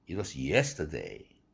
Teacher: 피치가 올라갔어요. 동시에 그 모음 yes 할 때 이 음절의 모음이 길어지게 마련이다